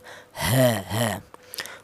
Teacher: Untuk huruf ha itu keluarnya huruf berasal dari pangkal tenggorokan